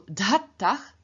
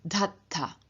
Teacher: with the reduplicative syllable aspirated, dh, and the dh at the end of the stem having lost both its voice and its aspiration